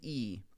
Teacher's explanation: when you go to say E, the back of your tongue comes up.